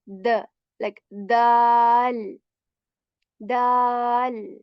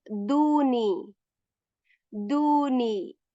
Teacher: we touch the roots of the upper front two teeth, and we take the tip of the tongue and we touch that area